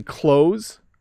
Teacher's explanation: We hardly say the TH at all.